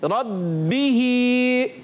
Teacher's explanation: खड़ी हरकत को एक अलिफ खींच कर अदा करना है, इस चीज़ का खास ख्याल रखेंगे।